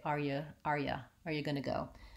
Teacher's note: you often gets reduced to you with a schwa